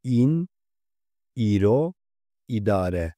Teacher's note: Kürtçedeki şapkalı İ harfi Türkçedeki İ sesi gibi okunmakla beraber biraz daha uzun okunur